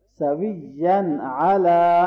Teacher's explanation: تنوین کے بعد حروف حلقے میں سے ہے تو اظہار ہوگا۔